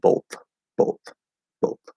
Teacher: you can use that dental t variation for the voiceless th